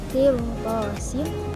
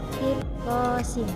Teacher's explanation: ro sukun di sini bisa dibaca tafkhim atau tarqi yang disebut dengan ro jawazul wajahain, yaitu ro sukun setelahnya terdapat huruf isti'la, maka cara membacanya bisa ditafkhimkan atau ditarqikan, seperti qirtasin atau qirtasin.